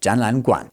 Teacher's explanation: the first two change into second tones